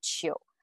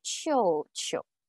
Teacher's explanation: But if you duplicated them, it will be chiu chiu. So the preceding syllable, its tone three has changed to tone two.